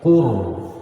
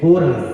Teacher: Qaf berbaris dhamma, maka ro dimatikan dengan bunyi tafkhim tebal. Qur. Jangan ngembang ya, jangan mengembang bibirnya.